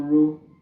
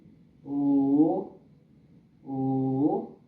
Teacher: This R is pronounced in a way that seems it is silent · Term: approximant